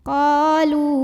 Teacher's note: Alladzina qa di sini ada mad tabi'i karena ada alif yang didahului baris fathah. Maka cara bacanya dipanjangkan qafnya dua harokat.